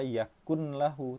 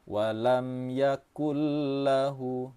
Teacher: Ini hati-hati, nun yang bertemu dengan lam jangan dibaca yakun lahu tapi yakul lahu. Suara nun sukun ini kita idghamkan atau kita leburkan ke dalam huruf lam. Tanpa disertai dengan dengung, nama hukum tajwidnya idgham bilaghunnah. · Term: idgham bila gunnah